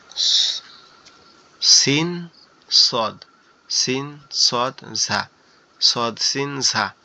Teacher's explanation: অর্থাৎ আমাদের জিহবার আগা নিচের দুই দাঁতের আগার সঙ্গে লাগায়া এই জায়গা থেকে উচ্চারিত